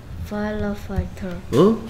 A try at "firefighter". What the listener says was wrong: 파일러 파이터가 아니고요. 파이어 불 몰라? 불? 파이어 불이 파이어잖아. 파이어 파이어 파이터 Firefighter.